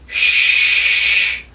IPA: ʒ